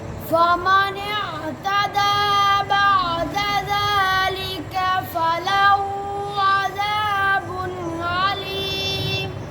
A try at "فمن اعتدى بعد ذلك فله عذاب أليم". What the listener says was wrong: फिर कलकला कर दिया अज़ाबुन अज़ाबुन अलीम जी वलकुम फिल क़िसास